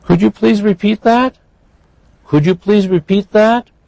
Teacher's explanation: notice that was a yes no question huh so we have rising